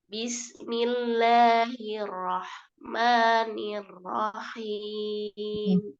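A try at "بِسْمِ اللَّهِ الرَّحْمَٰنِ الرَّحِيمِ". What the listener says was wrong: Tajamkan lagi sedikit sinnya. Bis, gitu ya. Bismillahi.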